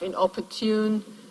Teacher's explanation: That has to do with the tendency of English, as many other languages, to want to have sort of stress pulses at regular intervals, more or less regular intervals, and since there are two syllables before the stressed one inopportune, the first one gets a secondary stress. So here we've got primary and secondary stress.